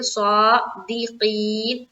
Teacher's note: دی کو جلد پڑھیں گے اور معروف کا خیال رکھیں گے